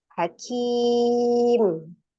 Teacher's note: Di situ ada huruf mim kasroh, ya, mim kasroh ketika waqaf menjadi mim sukun. Ya, jadi menjadi mad arid li sukun, panjangnya berubah menjadi 2, 4 atau 6 harokat